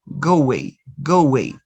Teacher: Wa. You are inserting the consonant wa. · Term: intrusion